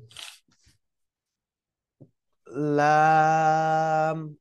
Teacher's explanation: জিহ্বার আগার কিনারা দিয়ে হ্যাঁ উচ্চারণ করতে হবে